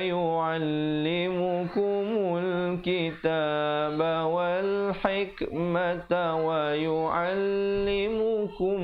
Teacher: dengungkan di situ mim mati bertemu mim 2 harakat